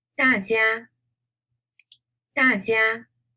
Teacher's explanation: first one is a falling tone and the second one is a flat tone